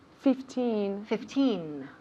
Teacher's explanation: with numbers when we have 15 16 17 18 19 the emphasis falls on teen